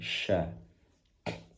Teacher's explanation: syin di sini berasal dari lidah bagian tengah yang diangkat ke arah langit-langit namun tidak sampai nempel ke langit-langit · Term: shin